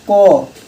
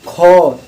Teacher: क में आपका जो श्वास है कम लग रही है, ख अंदर से ज़्यादा हवा निकल रही है